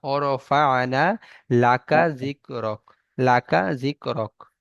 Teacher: কফের উচ্চারণ গলার মধ্যে থেকে লাকা এরকম হয়, কিন্তু কাফ একদম সিম্পল কা